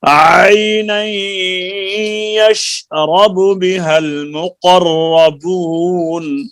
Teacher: یشرب کے با کو لمبا نہیں کرنا پیش ہے